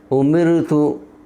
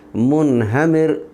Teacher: را ساکن سے پہلے زیر ہے، میم کے نیچے زیر ہے اس لیے را کو باریک پڑھیں گے۔